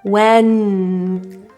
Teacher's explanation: Feel that the tongue tip is touching your roof for N and feel the air come out your nose. When. If it stops when you plug your nose, then you know the air fully came out of your nose.